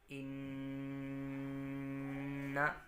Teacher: ناک میں تھوڑی دیر آواز کو روک کر ہم اس کو پڑھیں گے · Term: غنہ